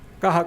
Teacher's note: esa aspiración arrastrada en lugar de la J